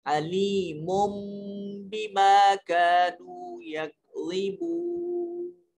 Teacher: نون تنوین کے بعد جب با آ جائے تو درمیان میں سے چھوٹی میم ملا کر پڑھتے ہیں. تو تو اس کو علی من میم پیش نون من نہیں پڑھیں گے، میم دو پیش میم مم کر کے پڑھیں گے، علیم بما كانوا یکذبون۔